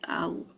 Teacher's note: آؤزو میں نے منہ کھولا اور اس کے بعد گول کر لیا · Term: آئین غائب ہو گیا